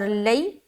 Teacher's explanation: یا ساکن سے پہلے زبر آ جائے تو یا لین کا قاعدہ بن جاتا ہے، یعنی کہ نرمی کے ساتھ جلد ادا کرنا ہے